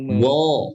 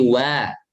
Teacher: huruf wawu sering dibaca tebal dan ini salah karena wawu sifatnya istifal. Jangan tebal, jangan wo, tapi wa.